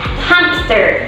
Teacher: many people pronounce hamster with a P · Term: insertion